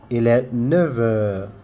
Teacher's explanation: You see the F there, we do some liaison and then we will not hear the F. The F now becomes like V.